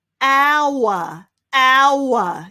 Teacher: We don't pronounce the H at all there, do we?